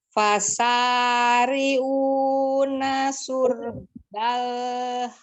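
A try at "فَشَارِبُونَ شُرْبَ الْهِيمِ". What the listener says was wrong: Wasyaribu. Bukan riu, ribu. Syurbal ya, tafasi di huruf shinnya, monyongkan bibirnya karena dia dhamah ya. Karena dhamahnya bukan karena huruf shinnya, tapi karena dhamahnya. Syur. Roknya tebal.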